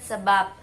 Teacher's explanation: pada posisi akhir sebagai kata posisinya mendua, maksudnya dapat sebagai fonem B, dapat pula sebagai fonem P. Di sini fonem B itu hilang kontrasnya dengan fonem P. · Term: arkifonem